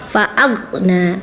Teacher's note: Huruf gha punya sifat rokhawah, artinya ngalir ya. Ketika sukun suaranya ngalir ya.